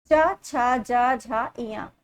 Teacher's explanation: चा वर्ग का जो उच्चारण स्थान है वो है तालु से